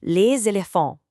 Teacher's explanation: any French-speaking child spontaneously says, Les éléphants. With that connecting Z sound